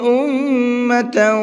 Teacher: میم کے اوپر تشدید ہے تو یہاں پر غنہ کریں گے، اور تاؤں کے اندر تا کے اوپر تنوین ہے اور اس کے بعد میں واو ہے۔ تنوین کے بعد میں واو آتا ہے تو وہاں پر بھی غنہ کرتے ہیں، تو دونوں جگہ پر غنہ کر کے پڑھنا ہے۔